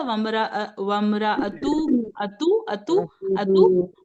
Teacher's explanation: तो वमरा अतुहु हू को खींचेंगे थोड़ा सा।